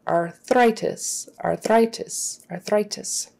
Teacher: So THR, your tongue has to go out between the teeth and then back. · Make sure you get your TH and don't put an F. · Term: THR blend